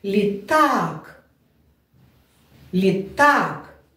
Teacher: наголос падає на другий склад на другий голосний звук